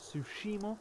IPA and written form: ˈtsuʃiˌmɑː (Tsushima)